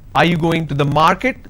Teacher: this is going up because the last word denotes like it's a question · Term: rising tone